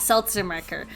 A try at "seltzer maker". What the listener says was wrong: Seltzer marker? You said seltzer marker, not seltzer maker.